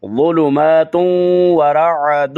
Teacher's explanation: فی ظلو، وا کو تھوڑا سا پر کر کے ادا کرنا ہے، زولو نہیں پڑھنا بلکہ ظلو میں تم ورعد، تم یہ اسی طرح تون ہے اور اس کی نون کو واو میں ادغام کریں گے